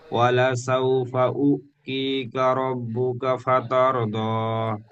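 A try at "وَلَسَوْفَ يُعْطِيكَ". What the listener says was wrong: ওয়ালা সাউফা ইউতিকা ইউ, এখানে উ হয়ে যাচ্ছে। ইয়া পেশ ইউ হয়, আর ইয়ার সাথে আইন যুক্ত করলে ইয়া আইন পেশ ইউ। ওয়ালা সাউফা ইউতিকা রব্বুকা ফাতারদা।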